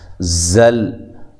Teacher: زا کو زور سے ادا کریں، سیٹی کے ساتھ ادا کریں، اور لام ساکنہ کو ہلانا نہیں ہے، موٹا نہیں کرنا، ٹھیک ہے۔